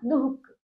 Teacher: बीच में द और ख के बीच में ह का उच्चारण